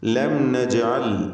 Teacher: ലം എന്നതിലെ സാക്കിനത്തായ മീമിനെ ഇൽഹാർ ഷഫവി നൽകി മണിക്കാതെ വെളിവാക്കണം